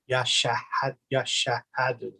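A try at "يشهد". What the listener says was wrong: Yeah, and then make sure we stop on the sheen, right? Because it has sukun. So yashhadu.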